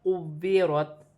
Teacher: کاف واو پیش کو، واو زیر وی، قوی، را تا زبر رت، قویرت وقفاً قویرت۔ واو مشدد ہے، جماؤ کے ساتھ ادا کیا جائے گا، 2 مرتبہ پڑھا جائے گا